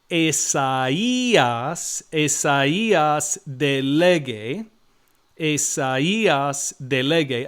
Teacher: the alpha and the iota don't form a diphthong there, and that's because of the umlauts over the iota.